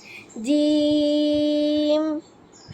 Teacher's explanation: পরে জিম, চার আলিফ টানতে হবে